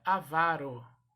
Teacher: A sílaba tônica é a penúltima, então se pronuncia avaro. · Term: paroxítona